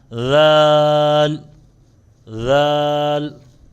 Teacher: جو دانت ہیں اوپر اور نیچے والے اس کے درمیان میں مڈ میں زبان ٹچ ہوتی ہے تب یہ ادا ہوتا ہے.